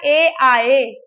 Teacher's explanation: तो ए आए का जब हम उच्चारण करेंगे तो इसमें कंठ और तालु दोनों का प्रयोग होता है। तो कंठ तालव्य वर्ण जो हैं ए दैतो कंठ तालु, ए आए जो है हमारे कंठ तालु दोनों को स्पर्श करते हैं।